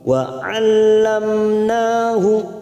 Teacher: mim sukun bertemu nun, kita baca jelas, namanya bacaan idhar safawi. Wa 'allamnahu, nah fathah berdiri 2 harokat kita panjangkan.